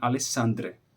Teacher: Se o seu nome, por exemplo, for Alexandre, e você for na Grécia, e você pedir para eles pronunciarem Alexandre, eles vão repetir Alessandre, porque eles não têm o som de sh